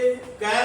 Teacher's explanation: हमारी आवाज जब हम ये वर्ण बोल रहे हैं तो कंठ से आ रही है